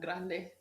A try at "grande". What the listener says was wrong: You gotta roll your R's. You got to roll your R's.